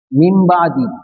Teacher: تنوین نون ساکن کے بعد اگر با آوے تو نون کو میم سے بدل دیتے ہیں